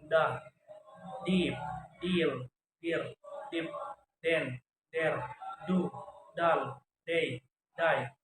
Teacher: Voice alveolar stop sound